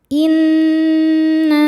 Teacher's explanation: Nun tasydidnya dihukumi gunnah musyaddadah karena nun bertasydid. Cara bacanya berdengung, tahan dengungannya kurang lebih 2 harokat.